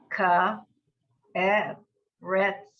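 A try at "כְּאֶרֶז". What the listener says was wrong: Erez. It's not a tzadi, it's a Zion. Ke'erez.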